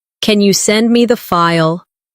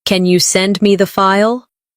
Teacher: Instead of saying flatly, Can you send me the file? use a rising tone at the end.